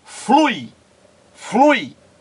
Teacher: o U é pronunciado mais forte, logo é a vogal. O I é pronunciado menos forte, logo é a semivogal, na mesma sílaba. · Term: ditongo